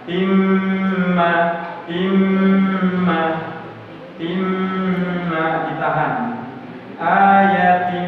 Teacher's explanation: masuk tanwinnya ke mim dan didengungkan